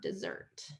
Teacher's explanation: So when there's two S's, we're going to do dessert, second syllable stress